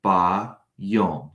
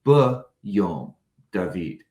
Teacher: where the A in the phrase in the day becomes that short E in the second sentence.